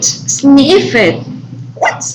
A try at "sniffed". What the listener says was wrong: no you should pronounce that t sound